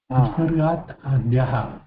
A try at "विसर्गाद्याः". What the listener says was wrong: विसर्गाद्याः इति एकं पदमस्ति one word.